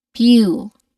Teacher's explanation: We hold the vowel sound oo a little bit longer, so it's a long vowel sound here.